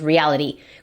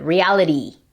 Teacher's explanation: en inglés americano decimos reality, con el flap R, que es básicamente la R en español